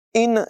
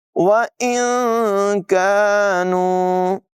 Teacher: كَانُوا، نون ساکن کے بعد کاف حروف اخفا میں سے ہے، نون کی آواز ناک میں لے جا کر اخفا کریں گے، یعنی اس کو ظاہر نہیں کریں گے